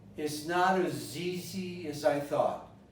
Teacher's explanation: The as becomes us. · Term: obscuration of the vowels